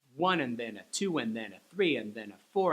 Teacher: the 1 2 3 4 are the exact same speed